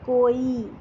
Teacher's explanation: حمزہ چھوٹی ہے تو جب ہم کیا کرتے ہیں ہم واؤ کے ساتھ ہی اس کی آواز کو ملا دیتے ہیں